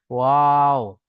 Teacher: দুই ঠোঁট না মিলিয়ে মাঝখান থেকে উচ্চারিত হয় ওয়াও।